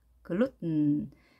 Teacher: L 발음 해주셔야 되고 또 트는 비음으로 바뀌고 어렵습니다. 글루튼. 우리는 이것을 글루텐이라고 한글로 표기하는데 텐으로 발음하지 않습니다.